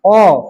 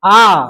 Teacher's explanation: পুরোপুরি কিন্তু খুলছে না আ পুরো খুলে দিচ্ছে। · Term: প্রসারিত